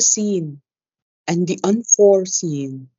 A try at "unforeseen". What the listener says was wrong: No, unforeseen. Yes, unforeseen. No, you're accenting for. It's the unforeseen, unforeseen,